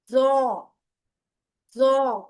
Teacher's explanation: जो जौ है उसमें थोड़ा जरा मजबूती से जबान की नोक को अंदरूनी किनारों से लगा के और जबान को पीछे से उठाना है